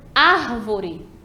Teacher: Árvore é a antepenúltima, ela é proparoxítona